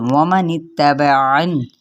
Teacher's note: واو کو ہونٹوں کی نا تمام گولائی کے ساتھ ادا کرنا ہے، نون کی زیر کو تا کے ساتھ ملائیں گے۔